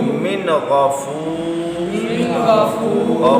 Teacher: غین اور مستعلیہ میں بھی شامل ہے، پر بھی پڑھنا ہے، نون ساکن کے بعد آیا ہے اس لیے یہاں غنہ بھی نہیں کرنا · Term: اظہار